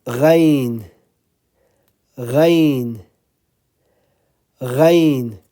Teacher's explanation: This one is coming from the upper part of the throat, same as خ.